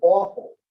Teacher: the aw sound as in awful still tense still back still round